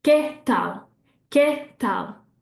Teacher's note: I'm hearing both of those with equal emphasis. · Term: syllable timed